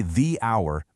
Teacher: The first sound you hear is ow, which is a vowel sound. But then look at university.